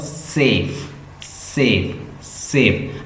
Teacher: हम जैसे सेफ बोल रहे हैं, अपर टीथ और लोअर लिप्स दोनों मिले हुए हैं, ये मिलके फंक्शन कर रहे हैं। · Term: लिब्योडेंटल्स